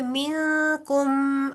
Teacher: नून साकिन को तो आप लंबा करेंगे क्योंकि इख्फा का कायदा आ रहा है